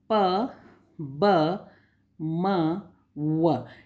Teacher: यानी जब आप इन अक्षरों को बोलते हैं तो बोलने पर ऊपर व नीचे के जो होंठ हैं वो एक दूसरे को छूते हैं। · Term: बाइलेबियल